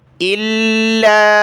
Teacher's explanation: لام کو سخت کیا تشدید کی وجہ سے